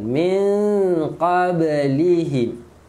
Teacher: Fatannal ladzi na min okey. Min nun mati bertemu qaf, dengung tapi sembunyikan nun